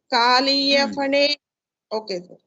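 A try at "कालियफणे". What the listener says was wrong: Oh, it's not Kaliya Phane, I told you. Kaliya Phane. Pa. The second. There is no fa in this alphabet. Of course, when you combine these two visargas, when pa comes, it becomes if. But otherwise, there is no fa as such.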